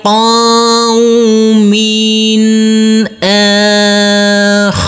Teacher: huruf mim ini tanwinnya kita baca dengan terang atau jelas karena bertemu dengan huruf alif ini adalah bacaan izhar.